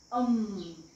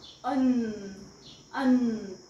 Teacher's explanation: students अम बघा म्हणून अम माझ्या लिप्स कडे लक्ष द्या अम म साऊंड येत असेल तर हे दोन्ही लिप्स जे आहेत ते एकावर एक येतात अम सो एम साऊंड आला तर लिफ्ट चिकटले पाहिजे लिफ्ट चिकटत